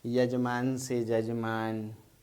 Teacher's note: य ध्वनि ज में बदल गई